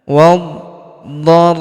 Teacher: huruf ra kita tahan dan kita tekan karena terdapat tanda tasydid di atasnya.